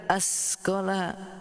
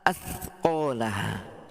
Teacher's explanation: Nah, tha ini tidak ada shafirnya. Jadi bunyinya athqalaha.